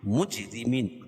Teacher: را کے نیچے زیر ہے تو را باریک ہوگی، اور یا ساکن سے پہلے میم کے نیچے زیر ہے تو یا مدہ، اس کو ایک الف کے برابر کھینچ کے پڑھیں گے، اور وقفہ کی صورت میں یا مد عارض وقفی ہوگا، اس میں طول توسط قصر تینوں جائز ہے۔